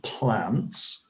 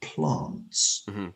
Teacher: northern England has shorter vowel sounds than southern England